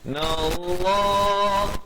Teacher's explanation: Wa in, dua harakat. Nallah, dengan tebal lafz jalalah, dua harakat